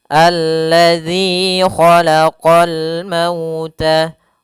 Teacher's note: Zal jangan sampai terubah dan terbaca menjadi huruf zai. Yang mana sering terjadi yaitu membaca huruf zal dengan huruf zai.